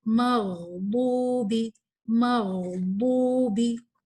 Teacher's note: غین جو ہے نا اس میں ہمس نہیں ہے مگر اس میں الرخاوہ ہے. اس کو آپ تھوڑا سا ٹائم دیں گے.